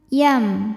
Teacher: Di sini ada hukum tajwid namanya idgham bi gunnah, karena ada nun sukun menghadapi huruf ya. Cara bacanya, nun dimasukkan ke ya disertai bunyi dengungan. Tahan. Yam.